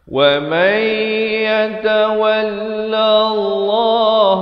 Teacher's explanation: Yatawallallah dibacakan lam itu bersabdu tekankan dan lafz jalalah dibaca tebal dua harakat